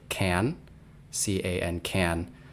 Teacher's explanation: the presence of the N sound will change the nature or the quality of the a before it